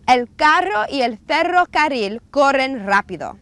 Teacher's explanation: ere is trilled try not to spit on anyone when you do this